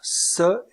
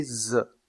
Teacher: La consonne se est sourde, tandis que la consonne ze est sonore. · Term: constrictives alvéolaires